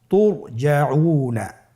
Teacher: র সাকিনের পূর্বে কি এসেছে, পেশ। র সাকিনের পূর্বে পেশ থাকলে অবশ্যই রকে পোর করে পড়তে হবে, মোটা করে পড়তে হবে